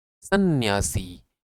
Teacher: और इसके बाद यहां पर एक अनुस्वार भी होगा सन्यासी मतलब जब आप बोलते हैं तो आपके नाक से भी ध्वनि निकलनी चाहिए है ना ये अनुनासिक और यह आधा ना फिर या फिर सी सन्यासी तो कहां